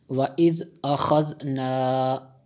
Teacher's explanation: واو زبر و، حمزہ ذال زیر اذ، حمزہ زبر آ، خا ذال زبر خذ، نون الف زبر نا، و اذ اخذنا، ذال کو دبا کے نہیں پڑھتے، اس کو نرم پڑھتے ہیں